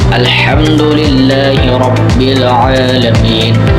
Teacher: Huruf ha itu tenggorokan tengah. · Huruf dal itu dari ujung lidah dengan gigi atas. Huruf lam itu ujung lidah.